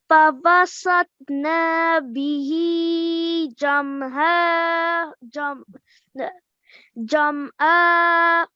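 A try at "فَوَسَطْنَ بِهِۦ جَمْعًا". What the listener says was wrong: Just remember to make the noon, to prolong the noon just for 1 second, okay? فَوَسَطْنَا بِهِ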